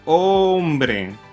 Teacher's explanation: una vez más el énfasis es en la penúltima sílaba